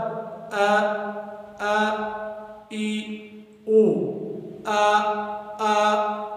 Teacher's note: حلق کے آخری حصہ جو سینے کی طرف ہے ادھر ادا ہوتا ہے